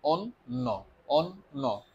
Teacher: দন্ত নটা মূলত দুইবার উচ্চারণ করি